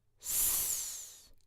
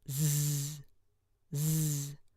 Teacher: So if we have the letter S, S made between the teeth, if we add our voice to that, it becomes Z, Z. Try putting your hands on your throat and feeling the difference between S and Z.